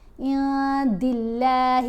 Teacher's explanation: دال کے نیچے زیر ہے تو اللہ کی لام کو باریک پڑھیں گے